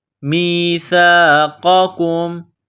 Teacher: میم کو یا کے ساتھ ملانا ہے، سا کو نرم کرنا ہے